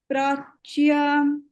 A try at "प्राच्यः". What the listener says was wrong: when we are stopping at prachya then we have to add the visarga. If we are reciting continuously, then the visarga will not be there.